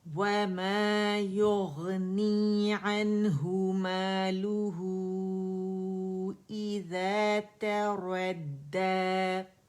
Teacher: ہم الف مقصورہ کھینچ رہے اس کی آواز کو 2 کاؤنٹس کے لیے